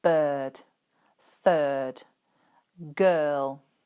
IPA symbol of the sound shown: ɜ: